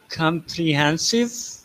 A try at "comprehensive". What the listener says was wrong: Yeah, that's good.